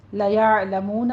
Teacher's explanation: आइन वस्ते हलक से अदा करना है, मुँह में वाव मद्दा अदा करना है।